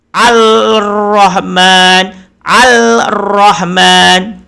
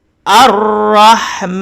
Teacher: Lam ada pada tulisan tetapi kita tidak membacanya. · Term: alif lam syamsiyah